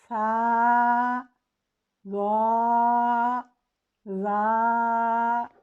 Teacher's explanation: जब ज़बान सामने वाले 2 दांतों के निचले सिरे से टकराती है तो इन हुरूफ की अदायगी होती है। इसमें ज़बान मसूड़ों से भी टकराती है। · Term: हुरूफ लिसाविया